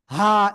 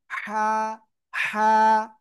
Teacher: এই গলা চেপে হালকা বাতাস বের করে উচ্চারণ করতে হবে।